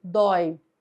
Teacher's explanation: nós temos o ditongo aberto oi em uma palavra que é monossílaba